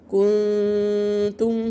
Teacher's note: نون ساكنة وراها تاء، جبنا هنا ايه غنة اخفاء حقيقي